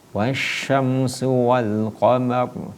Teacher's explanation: Itu dibaca tebal huruf rohnya ya.